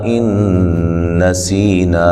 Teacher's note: نا پہ جو مد ہے مد جائز ہے. ان، نون ساکن کا ادغام مع الغنہ ہے. نسی، سی یا مدہ ہے.